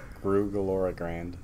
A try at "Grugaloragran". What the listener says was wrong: No D at the end, just Gran.